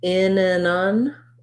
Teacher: To do that, I just drop my tongue and I lift it back up to the N again. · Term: syllabic N